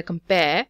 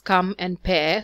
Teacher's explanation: Compare is made up of 2 syllables, come and pair. So the first one is unstressed and the second one is stressed. Stressed means that this part of the word is more pronounced when you say it.